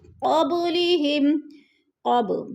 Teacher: با ساکن ہے اور حروف قلقلہ میں سے ہے تو ادھر قلقلہ ہو رہا ہے